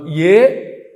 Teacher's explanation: ఏ అన్నప్పుడు కంఠము తాలువు రెండు కలిపి పనిచేస్తాయి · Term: కంఠతాలుహు